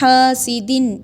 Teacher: حاسدن اظہار یعنی اس کو ظاہر کر کے پڑھیں گے اس کی نون کی آواز کو۔